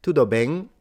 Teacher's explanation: It seems like the M is very nasalized